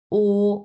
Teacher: ও টা যেরকম দেখা যাচ্ছে এইভাবে উচ্চারণও করতে হবে হ্যাঁ মুখ এই ও যখন উচ্চারণ করবেন তখন অবশ্যই আপনার মুখটাও এরকম রাউন্ড শেপ হতে হবে ও মুখটাও একবার এক্সাক্টলি রাউন্ড শেপ হতে হবে তাহলে এটার উচ্চারণটা